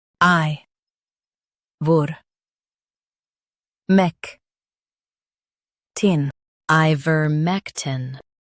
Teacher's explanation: Stress mec and keep tin soft.